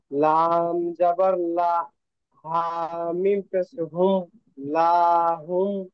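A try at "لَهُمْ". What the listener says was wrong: লা টান হবে না, লাহুম।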